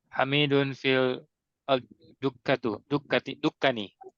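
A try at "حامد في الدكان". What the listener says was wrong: Hamid panjang. Lamnya lam syamsiyah. Fid. Dukkani. Panjang.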